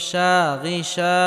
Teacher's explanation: জবরের বাম পাশে খালি আলিফ মাদের হরফে একালি পরিমাণ লম্বা করে টেনে পড়তে হবে